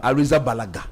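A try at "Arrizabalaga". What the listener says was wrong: in Spanish, G-A is ha, not ga.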